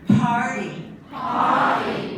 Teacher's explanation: that P is strongly aspirated, right? Nice, strong puff of air. Party. Party.